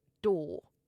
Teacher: You drop the R and you elongate the O. So door, not do. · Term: non-rhotic